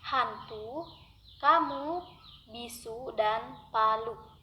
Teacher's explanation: Ucapan vokal U akan A. Menjadi lebih panjang karena posisi lidah berada lebih tinggi. Apabila vokal U itu yakni berada pada suku terbuka.